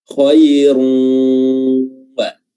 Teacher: Tapi kalau dengan dengung, kita berusaha untuk mengeluarkan suara atau mengeluarkan bunyi dari rongga hidung kita. Khairun wa, dan ditahan, ya.